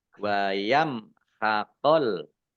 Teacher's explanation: mim sukun bertemu dengan huruf kha, bacaan idhar safawi, dibaca jelas.